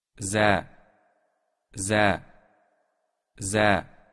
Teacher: Огласовка А после З произносится Э-образно.